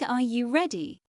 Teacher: in a question like Are you ready? your voice rises at the end. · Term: intonation, rising and falling tones